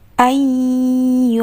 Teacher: nun sukun bertemu dengan huruf ya, idgham bi gunnah